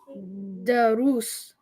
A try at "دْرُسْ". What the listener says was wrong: There's a harak on the dal or no? There's no harak on the dal. Drus. Kind of hard to pronounce now because it's starting with a sukoon.